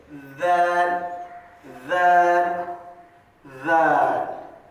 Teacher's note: زبان کی نوک اور اوپر کے دانتوں کے کنارہ دو لگنے سے